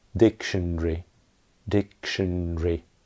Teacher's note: In British English, in normal speech, that's only 3 syllables.